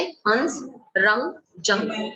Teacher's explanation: इसी में अब आगे चलते हैं हम, जिनका प्रयोग तो हम दिन रात करते हैं लेकिन हमें समझ में नहीं आते कि इनको कहते क्या है। देखिए अनुस्वार, अंग, अंग की ध्वनि को अनुस्वार कहते हैं। इसका उच्चारण नाक से होता है